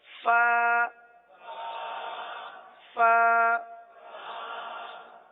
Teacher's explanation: اگلا حرف ہے فا. یہ اوپر کے دانت اور نیچے کے ہونٹوں کا جو تر حصہ ہوتا ہے وہاں سے ادا ہوتے ہیں. جیسے کہ میں نے پہلے بتایا تھا کہ ہونٹوں کے دو حصے ہوتے ہیں، ایک جو باہر رہتا ہے وہ خشک رہتا ہے، اور جو تھوڑا سا دانتوں کے ساتھ رہتا ہے یا بند ہو جاتا ہے وہ تر رہتا ہے.